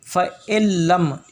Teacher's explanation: اور پھر اللہ تبارک تعالیٰ نے خود پھر آگے جواب دیا، فَإِلَّمْ یہ نون پڑھا نہیں جائے گا، فَإِلَّمْ یہاں پر ادغام ہو رہا ہے، اور ادغام بلا غنہ ہے، یعنی کہ غنے کے بغیر ادغام ہو گیا